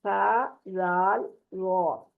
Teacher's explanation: जुबान से मतलब और जो जुबान से जो अदा होने वाले मजीद हरूफ हैं, उनमें नरमी से अदा होने वाले हरूफ में सा जाल वो, सा जाल वो, रॉ को यहाँ पर भी पुर करेंगे। ये तीनों हरूफ जुबान की नोक को ऊपर के सामने वाले दो दांतों के अंदरूनी किनारे से लगाकर अदा करते हैं। इनमें फर्क क्या है कि सा और जाल जो है वो बारीक आवाज से पढ़े जाएंगे, और रॉ जो है वो मोटी आवाज से पढ़ा जाएगा।